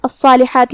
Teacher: کلمت الصالحات میں صاد پہ تشدید ہے، 2 حرف کے برابر ہمیں صاد کو پڑھنا ہے